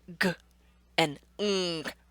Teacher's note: That tongue is hitting that top soft back part of your mouth. So, on your chart, you can write velar.